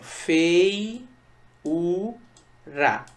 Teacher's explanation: Veja que o U ficou sozinho. E é a sílaba tônica. Porém, antes desse hiato formado entre o I e o U, eu tenho um ditongo. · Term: hiato tônico em U